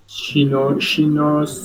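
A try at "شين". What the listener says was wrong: সিনো শিনো দুইটা কিন্তু আলাদা। শিনো শিনো হলে হবে না কিন্তু, মানে বুঝতে পারছেন উচ্চারণে ভুল হয়েছে সেটা। সিনো শিনো।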